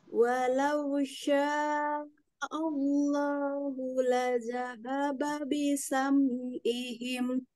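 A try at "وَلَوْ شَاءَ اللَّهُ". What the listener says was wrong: Baik, ini tambah lagi mad wajibnya ya Umi ya. Walau sya'allahu.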